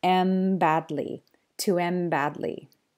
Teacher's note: So you're left with N badly. And so because the N is followed by a B sound, it will end up sounding like an M.